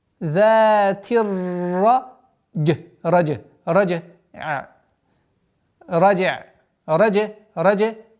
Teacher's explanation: «Зати» с та уходим на ра. Ра здесь твердое произношение, после которой калькаля джим.